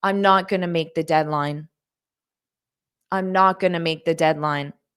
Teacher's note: notice how I said going to. I pronounce this as gonna in spoken English.